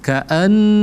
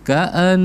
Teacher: nun bertasdid itu hukumnya adalah wajib al-gunnah. Wajib al-gunnah artinya wajib didengungkan. Ka'an, jadi kita tekan selama 2 harakat.